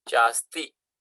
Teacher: This Sandhi rule says akara plus akara becomes akara. And here we will have cha plus asti, chasti. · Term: Swara Sandhi